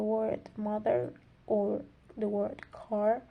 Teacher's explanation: For example, we have the word mother or the word car, and as you can hear clearly, this uses the R colored vowels, which emphasizes the R at the end of the word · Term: rhotic